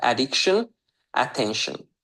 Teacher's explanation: Hər iki sözün də əvvəlində olan a hərfi əlifbadakı adı kimi deyil. Ə olaraq oxunur.